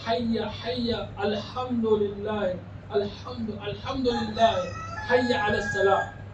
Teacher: ہا جو حلق سے ادا ہو، نارمل جب ہم ہا بولیں گے وہ حلق سے ادا نہیں ہوگی